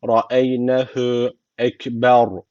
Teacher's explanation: ra harfi cezimli. Öncesindeki harf üstten bağlandığı için ra harfi burada kalın okunması gerekiyor.